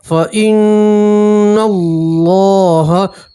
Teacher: نون کے اوپر تشدید ہے، نون میں گنہ کریں گے. اللہ کے نام سے پہلے زبر ہے تو اللہ کا نام پھول پڑھیں گے، موٹا پڑھیں گے.